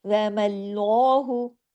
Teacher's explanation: باقی سب کچھ باریک، واو میم ہا بیچ میں، یہ سب باریک، صرف لام ہیوی، اس کو کہتے ہیں لام جلالہ۔